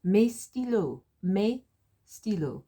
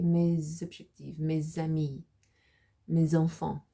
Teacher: Because objectif starts with an O with a vowel, then we pronounce the S, and that's a liaison, which is made between the S and the O.